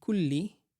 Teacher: the two lams are connected, they are joined together and represented by the shadda, as opposed to being written separately.